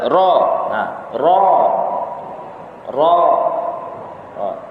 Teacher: Tidak ada desiran angin yang keluar dari mulut kita.